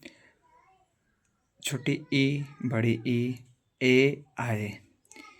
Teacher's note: जीभ के आगे वाले हिस्से से बोले जाने वाले स्वर होते हैं। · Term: अग्र स्वर